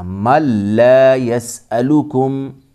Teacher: یہاں ادغام تام ہوگا، اسے ادغام بلا غنہ بھی کہتے ہیں، جیسا کہ ہم اوپر پڑھ چکے۔ نون ساکن کے بعد لام اور را میں سے لام آیا ہے، اس لیے نون ساکن یہاں سائلنٹ رہے گا، نون پڑھنے میں نہیں آئے گا، میم کو ہم ملائیں گے لام کے ساتھ۔